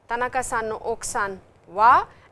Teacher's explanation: the intonation is rising in the end